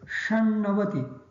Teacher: The ta of shat becomes na because of the na next to it. So, shan. The na of navati also becomes na because of the previous word shat has sh in it.